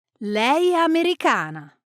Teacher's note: When spoken naturally, it often sounds like one word. Leana, the vowels blend together with no break between them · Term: linking sounds